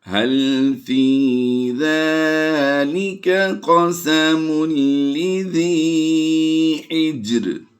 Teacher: جیم پر ہم قلقلہ صغریٰ کرتے ہوئے ادائیگی کریں گے